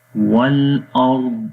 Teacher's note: را اور ضاد دونوں کو موٹا پڑھیں گے